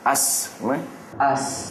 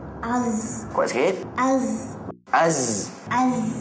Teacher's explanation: hujung lidah dan hujung Gigi atas bahagian hadapan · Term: sazos